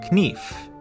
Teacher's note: in Middle English it was pronounced knef but after The Vowel Shift the K became silent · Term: silent letters